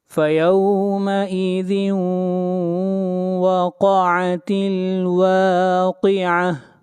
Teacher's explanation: قاف حروف مستعلیہ میں سے ہے، قاف کو موٹا پڑھا جائے گا اور آخر میں گول تا ہے، جب اس کے اوپر وقف کرتے ہیں تو گول تا ہا بن جاتی ہے